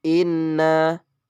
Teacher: Inna di situ ada nun bertasjid maka dibaca gunnah